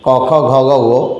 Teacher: ফুসফুস লাগছে কণ্ঠে, ক বর্গের ধ্বনিগুলো কণ্ঠধ্বনি